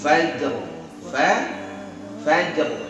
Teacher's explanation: Jim dari mana? Dari tengah lidah ketemu langit-langit, ya, tidak napas, dia tertekan, nggak mungkin keluar napas kalau ditekan.